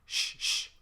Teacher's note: the ship is actually host alveolar or palliative alveolar where the the tongue is right behind the alveolar Ridge and the the middle of the tongue is kind of up at the soft palate